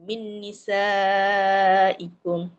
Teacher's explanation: Jadi isaikum kan kita kata mad wajib muttasil. Bacaan dia alim ulama semua baca melebihi dua harakat. Maksudnya a biasanya empat harakatlah. Empat harakat.